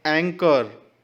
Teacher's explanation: इसमें CH का sound च ना हो करके क का साउंड निकलना